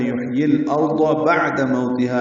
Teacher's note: یحیی الارض بعد موتها، عین ساکن پہ اظہار، دال کو جلدی ادا کریں گے، مو وولین ہے، ہونٹوں کو تمام گول کریں گے، تا باریک پڑھیں گے، حال مدہ 2 حرکات لمبا کریں گے، بعد موتها۔